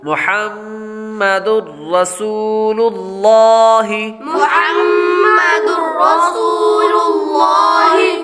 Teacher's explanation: میم مشدد ہے اور میم مشدد پر ہمیشہ غنہ ہوتا ہے تو یہاں پر غنہ کریں گے